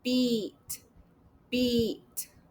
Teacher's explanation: when I say the e sound, my lips are spread. And if you could see inside, you would know that my tongue is high and in the front.